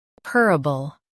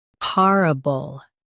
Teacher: Stress purr in US, par in UK. Keep bull soft.